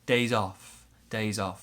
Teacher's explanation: big stress on off in this case